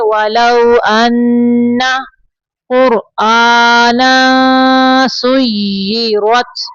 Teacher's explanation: ولو لام زبر لو یعنی واولین ہے تھوڑا نرمی سے پڑھیں گے